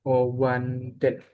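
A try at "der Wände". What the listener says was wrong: Die Farbe der Wanden. Wende ya. Ini kan A-nya umlaut sebenarnya. Nggak Wanden karena Wanden itu adalah bentuk genitif ya untuk pluralnya ya.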